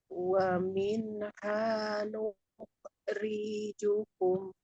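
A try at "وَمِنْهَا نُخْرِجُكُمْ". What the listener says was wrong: Ri-nya kepanjangan. Ri-nya kepanjangan Bu. Riju, tapi riju.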